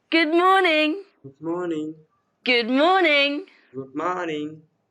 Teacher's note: In this sentence, the stress is on morning, so you say it louder and longer.